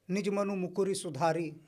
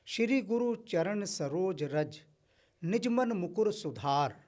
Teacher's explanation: जब भी ह्रस्व उ और ह्रस्व ई की मात्रा आती है अंतिम शब्द में उसका लोप हो जाता है